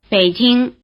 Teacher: in 北京 it comes before a different full tone, and so it loses its rising tail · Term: low tone